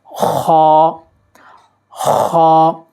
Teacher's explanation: یہ حرف بھی حلق سے نکلتا ہے لیکن حلق کے اس حصے سے جو منہ کے قریب ہے، یعنی کہ اوپر والا حصہ، اس میں خراش کی آواز سی ہوتی ہے اور یہ موٹا پڑھا جاتا ہے۔